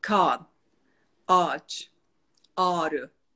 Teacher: ğ Aslında şekil olarak var ama telaffuzu yok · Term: yumuşak